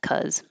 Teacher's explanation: often in regular speech, you may not even notice the be, buh, because it goes by so quickly, and it might just sound like cuz.